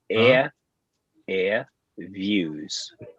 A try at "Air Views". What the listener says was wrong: Not booze. It's not booze.